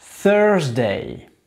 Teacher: on met la langue sur le bout des dents du haut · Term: le th